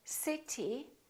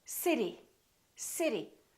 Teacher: this T changes and it becomes this fast D sound